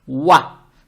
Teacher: Букву вау надо произносить правильно, то есть мягко. Фатху не тянем. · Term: буква вау